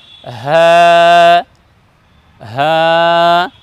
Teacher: এই বর্ণকে আমরা উচ্চারণ করব হ্যাঁ, হলকের শুরু থেকে উচ্চারণ করব